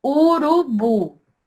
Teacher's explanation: a última sílaba que é a mais forte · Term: oxítona